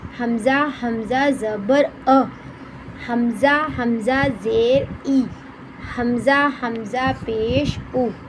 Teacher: حمزہ ہا، حلق کے سینے کی طرف والے حصے سے ادا ہوتے ہیں